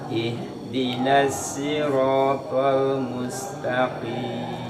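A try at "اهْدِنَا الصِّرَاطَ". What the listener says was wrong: Shotnya coba. Ihdinas nas. Itu masih sin. Shot. Nas. Nah, ihdinas Tolnya tebelin, terus lamnya tipisin. Tol. Nah, tol gitu. To, terus lamnya disenyumin, Pak.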